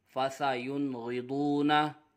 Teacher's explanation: نون ساکن کے بعد حرف حلقی میں سے غین آ رہا ہے اس لیے اظہار ہوگا، غنہ نہیں کریں گے